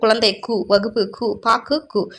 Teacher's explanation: அவ்வெழுத்து சொல்லின் முதலிலும் இடையிலும் வரும்பொழுது முழுமையாக ஒலிக்கிறது. சொல்லின் இறுதியில் வரும்போது ஒரு மாத்திரைக்கு பதிலாக அரை மாத்திரை அளவே ஒலிக்கிறது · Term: குற்றியலுகரம்